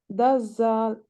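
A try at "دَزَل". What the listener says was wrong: ouais, Daza. Ouais, c'est ça.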